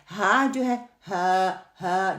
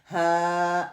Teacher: एंड as far as the letter ha is pronounced with the vibration of the vocal cord while they are close together, and it is not completely closed as the in the case of Hamza.